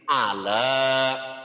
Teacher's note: Namanya mad. Panjangnya satu alif atau dua harokat, dua ketukan. Jadi ala.